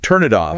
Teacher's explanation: The N links to the I and the tin links to the O. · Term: linking sounds